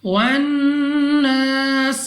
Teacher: نون مشدد غنہ کر کے پڑھیں گے، اور غنہ کرنے کے بعد الف سے پہلے زبر الف مدہ 2 سیکنڈ تک کھینچنا بھی ہے۔